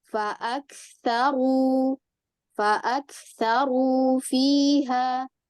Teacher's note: ro dhammah yang diikuti dengan mat waw itu dibacanya hanya 2 harokat